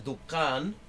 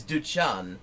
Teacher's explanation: it seems that they turn that k sound into a ch sound